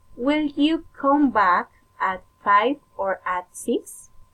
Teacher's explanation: alternative question rising and falling intonation